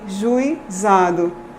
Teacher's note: A gente tem o U que ocupa o núcleo da sílaba, E tem a proeminência acentual. Depois a gente tem o I, que é o glide. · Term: ditongo decrescente